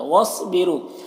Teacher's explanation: صاد حروف مستعلیہ میں سے پر پڑھیں گے